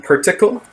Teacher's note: that first syllable, she pronounces it with that central close mid to open mid vowel right there. Kind of like as per the instructions rather than like the golf term par. · after the voiceless velar stop right there, that K, she omitted the palatal approximate, the y sound